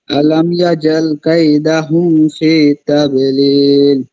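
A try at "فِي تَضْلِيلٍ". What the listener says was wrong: ফি ফি তাওলিল, দতটাকে মোটা করতে হবে। ফি তাওলিল।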